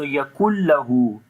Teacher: Here you can see noon sakin is coming. After the noon sakin, the next letter is lam. We make idgham without gunna. So that's why we are not making gunna sound here.